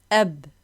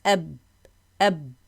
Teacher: the letter ba, when it is sakin, the two lips collide, tasadum, bit-tasadum, with the two lips.